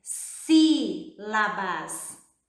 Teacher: A palavra sílabas, a sílaba forte, que é o si, recebe o nome de sílaba tônica